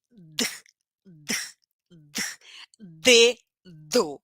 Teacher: a minha língua toca o meu dente também é plosiva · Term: letra d